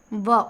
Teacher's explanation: दंतोष्ठ व्यंजन आपका एक है जिसका उच्चारण दांत और ओठों के मिलने से होता है। व बोलेंगे तो आपका जो दांत है व ऊपर वाला दांत नीचे वाले ओठ में हल्का सा टच करता है। · व बोलेंगे तो आपका जो दांत है, व ऊपर वाला दांत नीचे वाले ओठ में हल्का सा टच करता है। तो दांत और ओठ के मिलने से जिस व्यंजन का उच्चारित होता है वो दंतोष्ठ होता है।